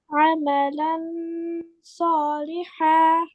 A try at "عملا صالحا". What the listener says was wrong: এখানে মোটা হচ্ছে না কিন্তু আমালান লান আমালান সালিহা